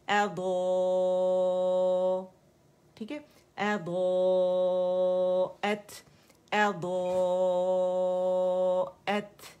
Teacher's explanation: حمزہ کو اقص الحلق سے اے کی ساؤنڈ کے ساتھ پراپر نکالنا ہے